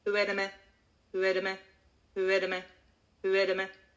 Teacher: we will say it as one word. It's going to be very monotonous.